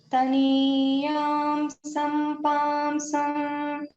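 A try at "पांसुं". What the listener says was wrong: It is not palmsam, it is palmsum.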